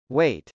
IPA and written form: wˈeɪt (wait)